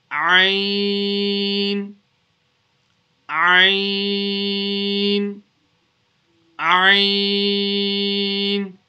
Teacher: The letter Ayn is pronounced from the middle of the throat.